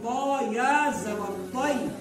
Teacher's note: یہ تا اور طا دونوں کا مخرج ایک ہے، پر تا نہیں پڑھیں گے بلکہ موٹا کر کے پڑھیں گے